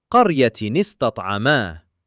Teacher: Sakin noon meeting sakin seen not allowed. So the tanween's noon takes a kasra. qaryatin ista'ama Gliding smoothly from one word into the next.